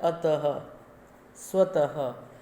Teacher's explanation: विसर्ग का चिन्ह क्या होता है, दो बिंदु, और इन दोनों का उच्चारण होता है ह के समान, यानी संस्कृत के ह की तरह इसका उच्चारण होता है